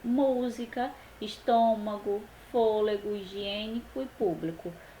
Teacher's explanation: Proparoxítona, a sílaba tônica é a antepenúltima.